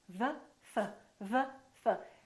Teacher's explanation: The position of the lips is the same, except one is voiced and one is voiceless. One uses the vocal cords and one doesn't.